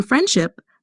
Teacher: In friendship, the D is often dropped before the sh sound. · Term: elision